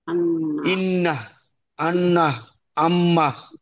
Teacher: নাকের বাসি হইতে গুন্নার সহিত উচ্চারিত হয়